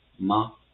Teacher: the short flat tone, the pronunciation is as a flat tone but shorter and lighter, and there's no indicator for the short flat tone